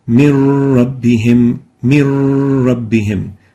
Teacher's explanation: We merge the still noon into the ra, producing a stressed ra, ra with shadda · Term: idgham without Ghunnah